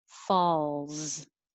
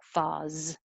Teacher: hold your tongue in the L position longer than you might usually think you need to, so that the L can be heard. And it looks like an S, but it sounds like a Z.